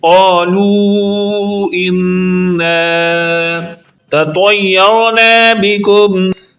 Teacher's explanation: قالو کا قاف دو نقطہ والا پر یعنی موٹی آواز میں تھک ساؤنڈ میں پڑھا جائے گا